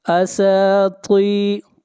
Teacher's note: اساطی، طا حروف مستعلیہ میں سے ہے، طا کو موٹا پڑھا جائے گا، را کو موٹا پڑھیں گے، را کے اوپر پیش ہے